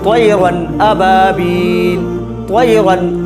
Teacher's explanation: اس کے بعد حروف حلقی کے 6 حرفوں میں سے حمزہ ہے، اس لیے نون ساکن، اس لیے تنوین کی آواز کو ظاہر کر کے بلا غنہ جلد ادا کریں گے